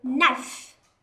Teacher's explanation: Còn âm k mà đi với âm n thì k bị câm